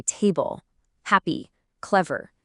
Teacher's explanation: the stress is almost always on the very first part.